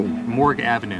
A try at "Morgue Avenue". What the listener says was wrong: It's not Morgan, honey, it's morgue.